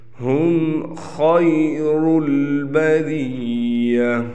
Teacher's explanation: यहाँ पर बाज़ लोग गुन्ना कर देते हैं, गुन्ना यहाँ पर नहीं है